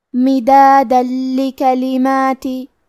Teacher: کلمت لی کلماتی، لام حروف الادغام بغیر غنہ میں سے ہے، تو ہم تنوین کو لام میں ملا کے بغیر غنہ سے لیکن تشدید کے ساتھ یہ حکم کو ادا کریں گے